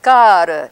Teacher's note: you draw that out a little bit you simply hold it longer so that's a long a